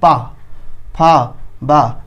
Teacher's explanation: उच्चारण स्थान ओष्ठ, दोनों ओष्ठ आपस में टकराते हैं।